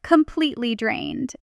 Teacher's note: in fast speech, it often compresses to something like complete drained. The T softens and almost disappears between two vowels.